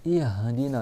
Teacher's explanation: Ihdina, c'est pas ihdina. Il faut vraiment que tu ouvres toute ta gorge et tu viens chercher le ha en bas de la gorge.